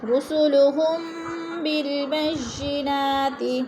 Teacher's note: میم ساکن کے بعد حرف با گیا تو ادھر اخفاء شفی ہو رہا ہے، غنہ کریں گے، ناک میں آواز لے جائیں گے